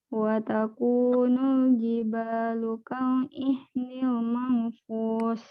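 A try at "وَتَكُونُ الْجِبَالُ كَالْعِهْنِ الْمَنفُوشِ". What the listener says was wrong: Kurang 2 harokat ikhfa'nya. Ditekan 2 harokat. Wa takunul jibalu kal ihnil manfush begitu.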